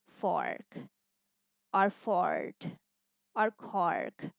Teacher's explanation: in American English, we simply say it or as in fork or fort or cork. We pronounce R.